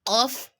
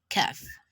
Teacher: When you're pronouncing letter of, your lips would form a circular shape, while when you're pronouncing letter Kaf, your lips would be flat.